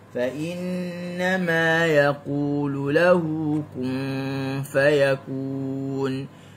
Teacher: Digunnahkan mim dan nun yang ada tanda tasydid. Mana-mana huruf nun, mana-mana huruf mim yang ada tasydid dalam Al-Quran, maka kena baca dengan gunnah. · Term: gunnah kamilah